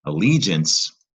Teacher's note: Allegiance is a 3-syllable word. Stress on the li.